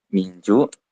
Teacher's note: nun mati bertemu dengan Jim dibaca samar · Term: ikhfa